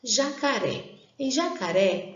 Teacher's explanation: jacaré sílaba tônica é a última sílaba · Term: oxítona